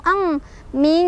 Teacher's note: Jadi untuk ikhfa ab'ad ini, nun ketemu kaf ini, suara dengungannya lebih terasa, lebih gede, lebih kedengeran dibandingkan samar-samarnya. Karena hurufnya jauh dari nun, jadi langsung masuk ang, ming gitu.